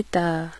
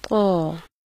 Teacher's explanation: ता के मुकाबले में क़ की आवाज़ मोटी होती है। अदायगी के लिए ज़ुबान जड़ से ऊपर को उठा दी जाती है, जैसे क़, और ता में ज़ुबान नीचे रहती है, जैसे ता।